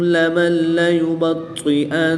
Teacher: نون ساکن کے بعد لام حروف یرملون میں سے ہے تو یہاں پر ادغام بلا غنہ ہوگا، یعنی کہ بغیر غنہ کے ادغام کریں گے